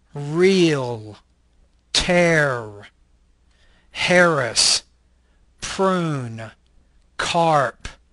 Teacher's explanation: This is an alveolar, retroflex liquid voice consonant.